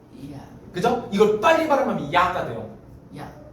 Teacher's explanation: 나머지 애들은요 이런 거잖아요. 예를 들어 야 같은 경우 보면 이에서 출발해서 아로 가거든요.